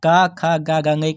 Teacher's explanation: क वर्ग वाला है वो कंठ से बोला जाएगा